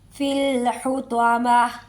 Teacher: حطمہ ویسے حطماتی ہے، لیکن جب وقف کریں گے تو تا نہیں ہا کی آواز آئے گی